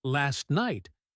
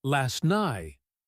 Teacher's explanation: it comes out as last night. the T is missing.